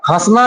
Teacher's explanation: हंसना जो है ये नाक और मुंह दोनों से बोला जाता है तो अनुनासिक होगा।